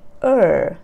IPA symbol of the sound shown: ɜ: